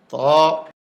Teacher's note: লদ ত এ হরফটি 1 আলিফ পরিমাণ লম্বা হবে, জিহ্বার আগা উপরের দাঁতের গোড়ায় ভিতর দিয়া ধাক্কা দিয়ে মুখ খুলে দিবে